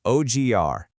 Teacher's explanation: In Brazilian Portuguese, that D actually transforms into a G syllable right before you hit the stressed R at the end. It's an O, then a soft J, kind of like the J in the English word jungle, ending with a hard punch on R.